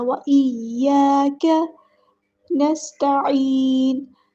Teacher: عین کو وسطی حلق سے ادا کرنا ہے اور یہاں پر مد اصلی ہو رہی ہے یعنی مد طبعی، 2 حرکات کے برابر اس کو لمبا کرنا ہے، لیکن کیونکہ آگے ہے نون کو ہم ساکن کر دیں گے وقف کی وجہ سے تو مد عارض ہوگی۔